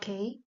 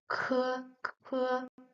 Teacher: It is a bit stronger, harder, and you will make some air flow out when you pronounce it.